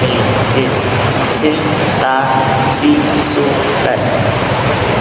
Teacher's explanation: huruf sin yang tipis dengan cara sedikit meringiskan mulut